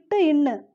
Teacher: நாவின் நுனி அன்னத்தின் நுனியை பொருந்துவதால் பிறக்கும் எழுத்து